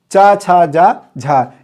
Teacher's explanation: इसे स्पर्श संघर्षी वर्ण भी कहा गया है, स्पर्श संघर्षी कहा गया है। यह आपको ध्यान रहे, चा, छा, जा, झा, इसे स्पर्श संघर्षी कहा जाता है।